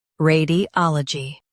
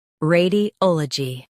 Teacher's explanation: ray di ol uh jee radiology ray di ol uh jee radiology In US, stress ah. In UK, stress ol.